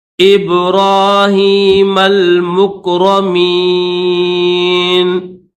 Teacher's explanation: میم کو لام کے ساتھ ملائیں گے، یہ لام ہے، اس کے اوپر جزم ہے۔